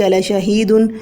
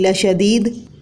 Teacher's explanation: تو یہاں پر شہید اور شدید کے درمیان تجنیس ہے، اور شہید میں ہا اور شدید میں دال بعید المخرج ہیں، کیونکہ ہا کا مخرج اقصی حلق اور دال کا مخرج زبان کی نوک اور ثنایا علیہ کی جڑ ہے